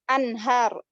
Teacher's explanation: nun mati ketemu h, berarti dia izhar, bacanya anhar. Satu aja, satu harokat, nggak boleh anhar, nggak boleh.